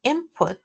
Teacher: And in input we have an nasalized lax eye and an unstressed syllable with put, so there's no aspiration in that case